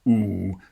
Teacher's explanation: this vowel ooh as it's represented or presented in the ipa system is supposed to be a really nice back ooh